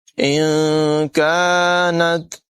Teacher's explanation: نون ساکن کے بعد کاف حروف اخفا میں سے ہے، یہاں پر اخفا کریں گے، غنہ کر کے پڑھیں گے، کاف کی آواز باریک ہوگی۔